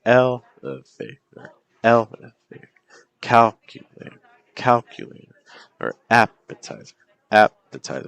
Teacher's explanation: The key thing is you don't want to go up in pitch on the third syllable. You want to just keep moving down.